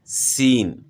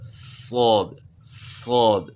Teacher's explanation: اب سین اور صاد میں جو ہے جو فرق ہے تفخیم اور ترقیق کا، سین کو باریک پڑھنا ہے یعنی ترقیق کے ساتھ، اور صاد کو تفخیم یعنی موٹا پڑھنا ہے،